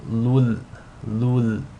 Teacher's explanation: You want to assimilate the tanween into the lam without any nasal sound. So it's as if the tanween is dropped and you're just saying lul, lul. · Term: idgham bila ghunna